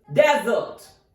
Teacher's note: as a noun its pronunciation is Desert the stress is on first syllable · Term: primary stress